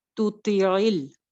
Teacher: یہ تھوڑا سا ڈیفیکلٹ ورڈ لگتا ہے، مجھے بھی لگتا تھا، آپ کو بھی میں بھی لگے جب پڑھنے میں، کیونکہ ایک تو تا اور تو اکٹھے آ رہے ہیں. تا اور تو کا مخرج قریب کا مخرج ہے، دونوں جو ہیں وہ اوپر والی دو دانتوں کی جڑ سے نکلتے ہیں